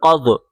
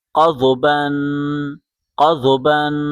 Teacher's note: قاف کو ضاد کے ساتھ ملائیں۔ ضاد جب پڑھیں گے زبان کی کروٹ بائیں یا دائیں طرف لگا کے پڑھیں۔ قاف ضاد زبر قض، قاف ضاد زبر قض۔